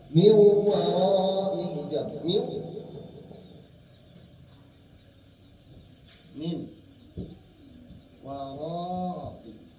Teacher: Maka gunnahnya yang ada pada huruf nun masuk ke dalam wawu, ada pada wawu. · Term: idgham naqis